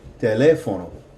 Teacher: notice that the second E has the stress on it. And so we're going to put more emphasis on that vowel than the preceding vowel.